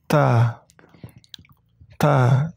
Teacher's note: cara membacanya sedikit dikeluarkan angin di ujung lidah